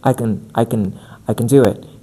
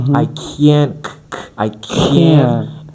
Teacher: the negative can is actually longer. The vowel sound is longer.